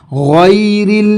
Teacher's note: را یہاں پر باریک ادا کیا جائے گا کیونکہ اس پہ زیر ہے